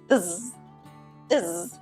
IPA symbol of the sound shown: ðz